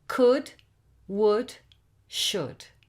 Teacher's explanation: The vowel sound is short, and the l is silent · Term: short /u/ sound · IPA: /ʊ/